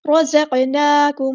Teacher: قاف ساکن آ گیا تو قلقلہ کریں گے، اس کو ہلائیں گے